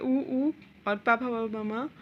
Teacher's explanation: ये ओष्ठ से बोले जाते हैं